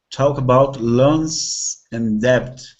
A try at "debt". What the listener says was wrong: Nice. Really good pronunciation of debt. It's a hard word to pronounce.